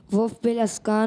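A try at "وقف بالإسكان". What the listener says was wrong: वफ़ बिल अस्कान नहीं, इसकान, वफ़ बिल इसकान और वफ़ बिल इसकान और मद्दे आरिज़, वफ़ बिल रोम तो नहीं है?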